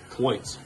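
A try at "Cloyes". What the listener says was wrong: There's no T. Oh, I thought you said cloit.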